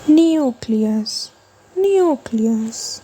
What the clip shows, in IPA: ˈnjuː.kli.əs